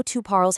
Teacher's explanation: Even though tu parles has an s on the end, that s is completely silent.